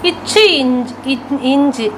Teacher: இந்த இருமைகளும் இடைநா நடு அன்னத்தை தொடுவதால் தோன்றுகிறது